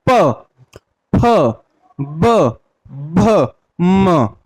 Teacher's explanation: ऐसे हम प वर्ग के व्यंजन का करेंगे तो प, प, होठों, हमारे दोनों होठे वो आपस में क्या कर रहे हैं, मिल रहे हैं। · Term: होठों के द्वारा